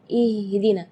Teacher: i i ah itu tidak boleh itu keluarnya dari dada sedangkan makhraj huruf ha itu adalah dari tenggorokan jadi Keluarnya tipis